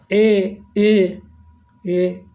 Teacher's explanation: अर्धविवृत जिसमें आधा गोला बनता है, ए आधा मुँह मतलब खोलना पड़ता है, तो अर्धविवृत। ए अर्धविवृत है।